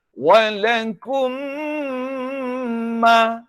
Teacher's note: Tetapi dalam bahasa Arab Al-Quran, bahasa Arab wahyu tak boleh dibaca begitu. Mesti didengungkan mim ni selama dua harkat.